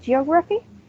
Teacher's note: It has 4 syllables and the stress is in the second one.